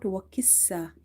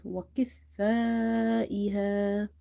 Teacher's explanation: This kaf is again heavy as it's from the musta'aliya letters. The letter tha is from the tip of the tongue. Avoid saying it like seen.